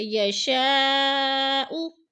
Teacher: مد متصل ہے، 4 الفی مد ہے، 4 الف کے برابر ہم نے اس کو کھینچ کر پڑھنا ہے، لمبا کرنا ہے